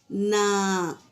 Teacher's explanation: زبان کی نوک کیسے مسوڑوں پر لگ رہی ہے تو نون ادا ہوگا۔ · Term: نون کا مخرج